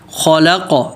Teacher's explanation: لام پتلا، آگے قاف موٹا اور قلقلہ